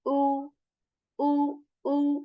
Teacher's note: Hamza with dhamma is a very sharp sound again.